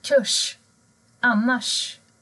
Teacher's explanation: R och S ändrar ljudet till sh, sh-ljudet.